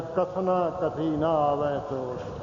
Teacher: ਕਈ ਵਾਰੀ ਅਸੀਂ ਆਪਣੀ ਲੈ ਤਾਰ ਜੀ ਕੋਈ ਰਾਗ ਜਿਹਾ ਬਣਾਉਂਦੇ ਹੋਏ ਪੜ੍ਹਦੇ ਹੋਏ ਕਥਨਾ ਕਥੀ ਆ ਕਹਿੰਦੇ ਹੁੰਦੇ, ਨਹੀਂ ਕਥਨਾ ਕਥੀ ਇਕੱਠਾ ਉਚਾਰਨਾ ਹੈ ਜੀ। ਕਥਨਾ ਨੰਨੇ ਨੂੰ ਵੱਖਰਾ ਨਹੀਂ ਹੋਣ ਦੇਣਾ ਹੈ